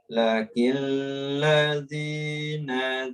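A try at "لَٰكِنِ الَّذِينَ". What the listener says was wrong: La, dua harokat.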